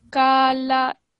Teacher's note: this is not a kaf, it's a qaf. Okay, so try and make this sound a little bit thicker when you're saying it.